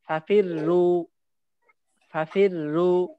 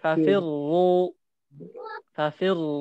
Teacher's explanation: প্রথমটা পাতলা পরেরটা মোটা